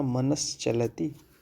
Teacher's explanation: दंत सा के बाद चा आया, इसलिए वह तालव्य में परिवर्तित हुआ